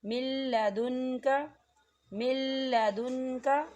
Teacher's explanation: آپ لام کی مثال کو دیکھیں، من لدنک، من لدنک، دیکھیں یہاں نون ساکن ہے، نون ساکن کے بعد لام آ رہا ہے، لام کے اوپر تشدید ہے، اور یہاں غنہ نہیں ہوگا۔